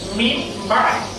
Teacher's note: তো মিম, মিম জের মিম, তাহলে উচ্চারণটা হচ্ছে মিম বাই। নুন উচ্চারিত হচ্ছে না, নুনের পরিবর্তে মিম উচ্চারিত হচ্ছে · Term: ইকলাব